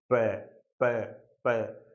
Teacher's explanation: जब प बोला जाता है तो ओष्ठों से वायु संघर्ष करती हुई बाहर निकलती है। आप बोल के देखिएगा, प प प, आपकी जीवा, आपके ओष्ठ बंद होते हैं लेकिन हवा संघर्ष करती हुई ओष्ठों से बाहर निकलती है, आप पै बोल पाते हैं बिना ओष्ठों के हिलाए।